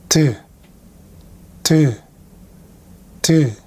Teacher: you can hear a popping explosive sound between your tongue and your front teeth